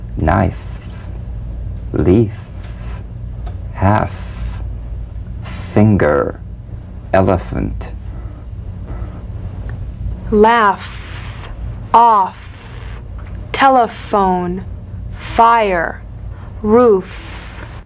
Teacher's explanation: the unvoiced fricative labiodental. Upper teeth to lower lip, just like the V.